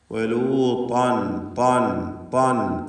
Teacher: ഇസ്തിഅല ഉണ്ട്. ത്വാഇൻ്റെ ഉച്ചാരണ സമയത്ത് നാവിൻ്റെ പിൻവശം ഉയരും എന്നതുകൊണ്ടാണ് ഇസ്തിഅല എന്ന സിഫത്ത് അതിനുണ്ടെന്ന് പറയുന്നത്.